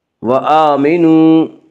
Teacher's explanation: حمزہ کے اوپر کھڑا زبر ہے، کھڑا زبر کو ایک الف کے برابر کھینچ کر پڑھیں گے۔ وآمنوا، واو مدہ وہ واو جو ساکن ہو اور اس سے پہلے پیش ہو، واو مدہ کو ایک الف کے برابر کھینچ کر پڑھیں گے۔